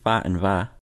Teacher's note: fa and va are made with both of the lips only, no teeth at all